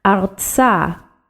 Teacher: we have resh, and remember that's in the back of your throat, resh with etzadi, artsa.